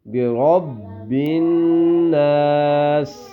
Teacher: یہاں پہ نون مشدد ہے تو یہاں پہ ہم غنہ کریں گے